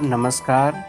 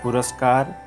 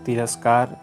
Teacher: नमः जोड़कार नमस्कार। नमः के अंत में विसर्ग है, उसके बाद क व्यंजन है, इसलिए नमः के विसर्ग को दंत स होकर नमस्कार रूप बन गया